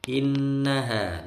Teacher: Nun bertasydid dengung lama